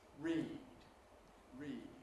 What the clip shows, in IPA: riːd